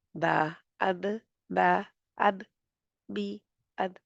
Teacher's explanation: जज़्म पहले आ रही है तो कलकला हो रहा है